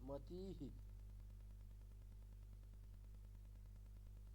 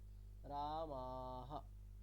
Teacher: বিসর্গের জায়গায় আমি হকার নিচ্ছি, তারপরে আমি যে স্বরবর্ণ ইউজ করব সেটা কিন্তু আর দীর্ঘ উচ্চারণ করব না